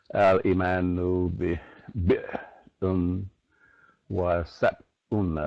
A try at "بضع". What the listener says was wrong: No. Shuf, put the da before you put an ayn. Bid'un, not bi'dun. Bid'un.